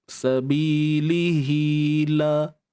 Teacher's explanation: Kalau kita sambung fi sabilihi, baru kita baca 2 harakat. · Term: maksilah qasirah